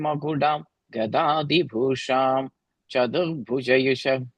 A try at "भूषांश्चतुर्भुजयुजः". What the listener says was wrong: And that 4th line, first word, Bhushamsh, there's the ish sound there also, okay? Bhushamsh Chaturbhujayujas.